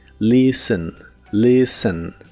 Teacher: La T de esta palabra no se pronuncia y la E es muy suave.